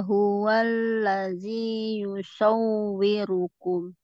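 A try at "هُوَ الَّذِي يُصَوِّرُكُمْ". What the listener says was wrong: Ya, ini ulangi ya. Ini afwan, wawunya ke bawah. Walladzi yusawwirukum.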